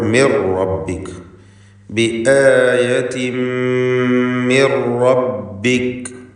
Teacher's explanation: മിൻ റബ്ബിക എന്ന സാക്കിനത്തെ അനൂനിനെ ശേഷമുള്ള റായിൽ പൂർണ്ണമായും ലയിപ്പിച്ച് മണിക്കാതെ ഉച്ചരിക്കുകയാണ് വേണ്ടത്